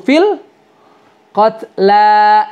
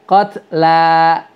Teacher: Lamnya dua harakat, qatla bukan qatl.